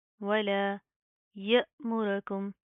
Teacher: ولا، ولا يأمركم، या हमजा ज़बर य, य हमजा के ऊपर जज़्म है, झटका देंगे